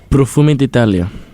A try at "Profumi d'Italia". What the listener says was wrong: Man, you gotta say it with more emphasis.